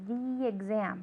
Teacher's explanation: Okay, it's vowel, same vowel to same vowel, so the exam, right? That's why it sounds like one word instead of just saying the exam. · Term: link